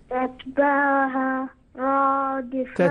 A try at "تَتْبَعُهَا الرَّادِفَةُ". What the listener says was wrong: تتبعها الرادفة، شد الراء،